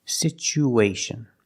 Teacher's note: Because there's no stress on the U, we change the T to the ch sound.